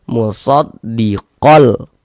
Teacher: Yang dimasukkan itu apanya? Bunyi tanwinnya ini dimasukkan ke huruf lam, melebur ke huruf lam. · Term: idgham bila gunnah